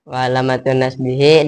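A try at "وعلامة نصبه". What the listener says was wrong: Wa alamatu nasbihi. Maka nggak boleh wa alamatun nasbi. Nggak usah lu tasdid nunnya, wa alamatu nasbihi.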